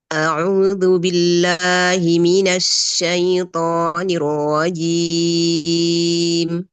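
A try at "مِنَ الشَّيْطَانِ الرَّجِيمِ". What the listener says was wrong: Shya ini hati-hati jangan terlalu ke depan biar enggak banyak safir.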